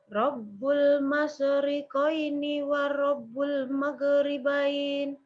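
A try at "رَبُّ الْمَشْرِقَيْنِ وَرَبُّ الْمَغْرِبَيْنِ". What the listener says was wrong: Oke, hati-hati jangan sampai pantul. Maghribain, jadi nggak sampai maghribain, tapi maghribain. Bunda ada kayak mageri, kayak ada pantulan di ro sama masyriqaini wa rabbul maghribain. Maghribain.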